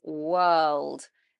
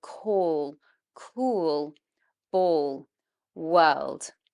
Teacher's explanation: the back of the tongue comes up at the same time as the front of the tongue coming up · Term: dark L